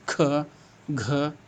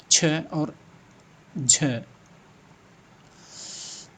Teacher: प्रत्येक वर्ग में दूसरा, चौथा वर्ण महाप्राण कहलाता है। जैसे क वर्ग में ख, घ, च वर्ग में छ और झ।